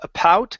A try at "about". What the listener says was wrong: a bow, about. Almost. You're saying a pout. You're pronouncing a P. Give me a b. About. So the trick here to feel the difference, okay? Take your hand, place it right here on your throat. If you feel the vibration, you're saying it right. Bout.